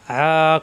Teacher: কণ্ঠনালীর মাঝখানে চাপ দিয়ে মাদের হরফ একালিফ টান